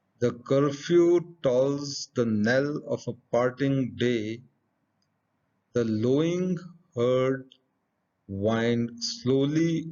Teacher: has five pairs of syllables for a total of ten syllables in each pair the first syllable is unstressed or unaccented and the second is stressed or accented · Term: pentameter